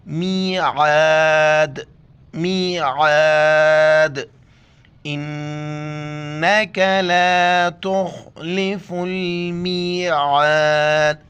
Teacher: حمزہ نون زیر ان، نون زبر ن، کاف زبر کے، انک لا تخلف، خا کو موٹا کر کے پڑھنا ہے، تخلف المیعاد، عین کو گلے سے ادا کرنا ہے اور دال کے آخر میں قلقلہ کرنا ہے، یعنی دال پر جب ہم پہنچیں گے صرف دال کو پڑھیں گے، اس کو زبر کو نہیں پڑھیں گے اور جھٹکے کے ساتھ پڑھیں گے۔